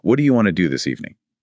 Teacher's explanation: The emphasis falls naturally on want, do, evening, not on what do you do this. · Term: Sentence stress, sentence stress